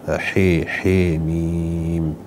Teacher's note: من أحكام التلاوة فيها بعض القراء يميلون الحاء